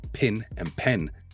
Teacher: The third thing I'd like to discuss is that pin-pen merger. In Texas, pin and pen may sound the same.